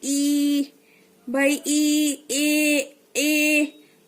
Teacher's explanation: पहला है अग्र स्वर, जिन स्वरों के उच्चारण में जीवा यानी जीभ का अग्र यानी आगे का भाग ऊपर उठता है, वह अग्र स्वर कहलाते हैं।